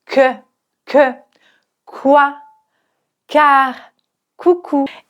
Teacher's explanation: l'air est bloqué au fond de la bouche avant d'exploser